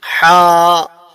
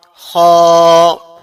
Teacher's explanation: ہا کی جو آواز ہے وہ ہمارے درمیانی حلق سے نکلتی ہے، خا کی جو آواز ہے وہ ہمارے آخر حلق سے نکلتی ہے